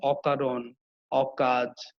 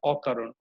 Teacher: এখানে অটা কিন্তু অ এর মতোই উচ্চারণ আছে। অটা কিন্তু ও এর মতো উচ্চারণ হয় না। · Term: বিবৃত অ